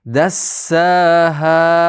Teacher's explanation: Dassada ushlab turingiz. Tashdid bor.